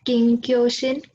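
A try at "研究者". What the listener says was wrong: Shin janai. So reva sha desu ne? Sha. So Kenkyu sha. So just like Isha, this is Kenkyu sha.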